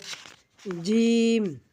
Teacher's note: জিম জিহ্বার মাঝখান থেকে শক্ত করে উচ্চারণ করতে হয়